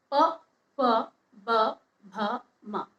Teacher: बिना होठों को जोड़े हम प वर्ग को नहीं बोल पाते हैं, इसलिए इसके पांचों जो वर्ण होते हैं ये होठ की सहायता से बोले जाते हैं, इसलिए इसका उच्चारण स्थल होता है ओष्ठ।